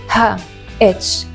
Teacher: It’s soft, gentle, breathy…like English H but even softer! · The letter ” ه” is made HERE In your LARYNX - your voice box!